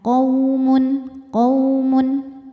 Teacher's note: Kalau terus hukumnya hanya huruf lin saja. Karena ada waw sukun didahului baris fathah. Dibacanya tidak dipanjangkan melainkan cukup dilembutkan.